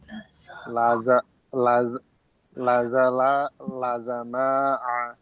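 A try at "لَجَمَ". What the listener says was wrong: এটা জা না, জিম। জিমের উচ্চারণ কি হবে? লাজা লাজামা।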